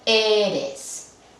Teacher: Eres, acaba en S, que es como si fuera un vocal, Entonces, la penúltima debería de llevar la acentuación